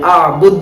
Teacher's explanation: دال پر قلقلہ لیکن تشدید جیسی آواز نہیں